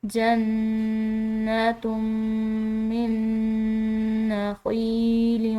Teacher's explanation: یا ساکن ہے، یہ کیا ہے مدہ ہے، اس کو ہم نے کھنچاؤ دے کر پڑھنا ہے ایک الف کے برابر